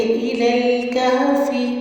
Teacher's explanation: اِلَى الْكَهْفِ میں آپ نے الف کی زیر کو شارپ کرنا ہے، لام کو لام سے ملا کے دونوں لام باریک پڑے جائیں گے۔ کہفی، ہا کا مخرج ہے، اچھے سے ادا کریں گے۔